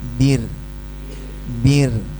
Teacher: Ada getaran tapi tipis